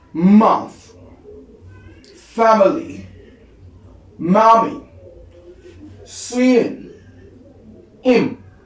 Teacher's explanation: So followed by as in a voice bilabial nasal, meaning that this is involving both lip and coming out through the nose